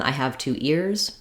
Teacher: you'll just hear that really weak Z